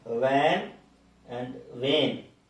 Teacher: Then we have V sound, V. It is labiodental, V sound in van and vein.